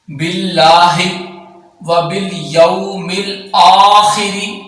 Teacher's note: اب اللہ کا لام یہاں باریک پڑھیں گے کیونکہ اللہ کے لام سے پہلے والے حرف کے نیچے زیر آ رہا ہے، اور جب اللہ کے لام کے پہلے والے حرف کے نیچے زیر ہوتا ہے تو اللہ کا لام باریک پڑھتے ہیں۔